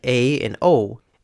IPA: ei and ou